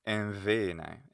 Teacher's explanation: Modern Greeks would say mvene. They would fricativize it.